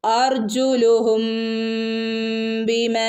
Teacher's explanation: ബിമ ഇവിടെ രണ്ടനക്കം നീട്ടി കൊടുക്കണം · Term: സാധാരണ മദ്